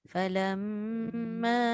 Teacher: Falamma Falam. ahassa Falam dengung dulu baru ma